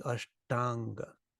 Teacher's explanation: and we say them back to back without stopping becomes Ashtanga the A's merged together and become long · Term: long a